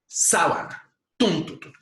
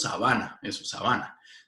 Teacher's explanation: La sábana tiene la prominencia acentual en la antepenúltima sílaba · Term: palabra grave